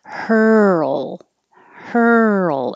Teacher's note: It's that your tongue is curled back for the R, moves to the L position. So while you're moving, keep making sound.